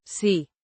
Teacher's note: Pronounced C with a rising intonation at the end.